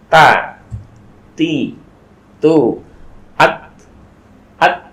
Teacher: ujung lidah menempel kepada pangkal gigi seri yang atas